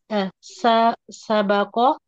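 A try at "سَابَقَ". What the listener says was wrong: panjang, sabaqa,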